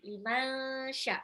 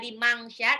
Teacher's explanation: nun sukun ketemu shin itu ikhfa, ditahan ya. Liman sya, bukan liman sya, apa limang sya, tapi liman sya, shinnya mad wajib mutasil.